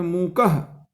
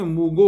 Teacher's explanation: तथा अघोष स्पर्श घोष हो गए, जैसे अघोष स्पर्श के उदाहरण के रूप में मूकह, घोष के रूप में मूगो हो गया।